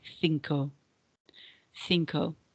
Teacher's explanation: So with cinco, we're going to say th rather than cinco. You'll notice that CI is a th sound in Spanish if we speak Spanish that's from Spain. If you speak South American Spanish, we can say cinco, but you'll notice that my Spanish is from Spain, so I will say cinco.